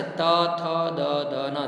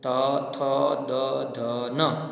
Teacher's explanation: જીભ છે એ દાંતને અડે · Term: દંત્ય